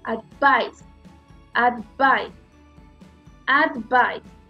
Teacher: El primer sonido no tiene mi estrés, lo tiene suave.